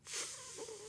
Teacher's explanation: In this type of speech error, the tongue doesn't totally protrude between the teeth like an interdental lisp, but it does push against the back of the front teeth. This produces a more muffled S sound. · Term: dentalized lisp